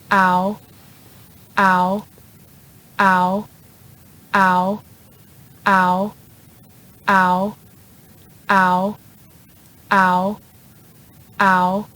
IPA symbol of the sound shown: aʊ